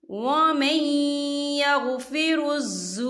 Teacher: नून साकिन के बाद जो है या आ रहा है और या जो है हरूफ यरमलून में से है, तो यहाँ पर इदगाम होगा, थोड़ा सा हम गुन्ने के साथ पढ़ेंगे।